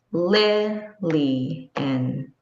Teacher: So if the word is Lilian, li, in, that's 3 beats. And the stress is on the first beat, li, in. Do you hear the difference? It's louder and it's more emphasized.